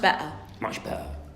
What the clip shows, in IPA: beʔer